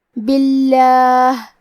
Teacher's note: کلمت اللہ میں لام کے تشدید کو ظاہر کریں گے. کلمت باللہ یہاں با کے نیچے زیر ہے لہذا یہاں لفظ الجلالہ مطلب کلمت اللہ کے لام کو ترقیق سے مطلب پتلی آواز میں پڑھیں گے